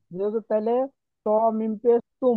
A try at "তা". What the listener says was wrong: ত না, তা।